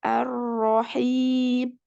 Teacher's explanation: Ada getaran pada huruf ro-nya. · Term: takrir